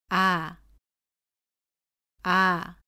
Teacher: 발음은 입을 크고 둥글게 벌린 다음에 혀는 가장 낮은 곳에 두고 발음합니다.